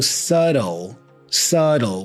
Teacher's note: b the B here is silent so we say subtle subtle the T here has a flap sound · The T here has a flap sound, da-da. So I go subtle, subtle, with the L, also for the O at the end.